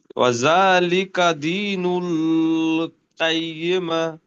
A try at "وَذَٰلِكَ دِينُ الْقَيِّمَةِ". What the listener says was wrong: নুল এখানে টান হয়ে যাচ্ছে, টান হবে না। জি না, যখন অ সাকিনের ডান দিকে পেশ আসবে তখন ও মাদ্দা হবে।